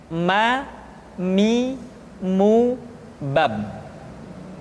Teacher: huruf Ma diucapkan dengan cara merapatkan dua bibir